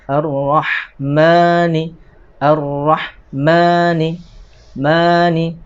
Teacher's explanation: Kemudian berikutnya ada huruf mim, ya. Mim ini dia dibaca panjang, berarti dia mad tabi'i, ya. Kalau mad tabi'i itu panjangnya 2 harokat.